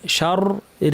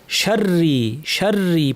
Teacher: র তাসদীদের সাথে জের থাকায় পুরোটাই পাতলা হবে। অনেকে শার ভারী বলেন, শার রি বলেন, এটা ভুল।